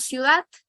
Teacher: ciudad es la unión de dos vocales cerradas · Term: diptongo